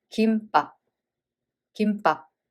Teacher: So first one has a m sound of 받침, we read it as 김. And the second letter starts with b sound. So this b sound becomes tensed.